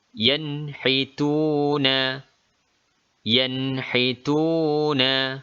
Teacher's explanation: Nun dibunyikan secara jelas dan cepat tanpa ada dengung. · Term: izhar halqi